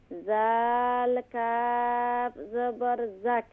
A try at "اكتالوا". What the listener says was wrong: Don't do qalqala, control.